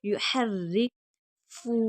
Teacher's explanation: را مشدد ہے، سختی کے ساتھ پڑھی جائے گی، باریک پڑھیں گے کیونکہ را کے نیچے زیر ہے۔ یحرفو، فا کو کھینچ کر پڑھیں گے، واو مدہ ہے۔